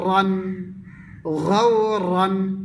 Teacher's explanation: রার উপরে দুই জবর থাকিলেও রা পুর হবে